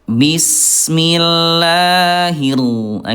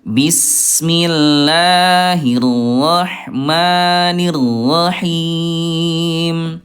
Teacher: Pertengahan Ayah Bunda antara terlalu bergetar dengan huruf rnya hilang.